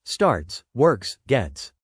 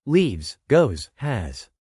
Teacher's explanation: The S ending sounds different depending on the verb. Sometimes it's a soft S sound, like starts, works, gets. Sometimes it's a buzzy Z sound, like leaves, goes, has.